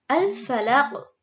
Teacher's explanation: Bunyi huruf qaf pada akhir lafaz dibaca memantul dan dinamakan qalqalah kubra · Bunyi huruf lam pada lafaz al-falaq dibaca jelas dan dinamakan alif lam qamariyah